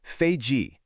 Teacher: the first tone dropping to a fourth tone